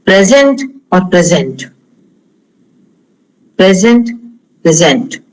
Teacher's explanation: Present, if the stress is on the first syllable, then it's a noun.